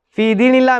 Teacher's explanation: அல்லாஹ்வுடைய வார்த்தை முன்னால் உள்ள எழுத்திலே கஸ்ரா என்று சொல்லக்கூடிய அடையாளம் வந்திருக்குது அப்படி வந்தால் அல்லாஹ்வை மெல்லினமாக உச்சரித்து ஓத வேண்டும்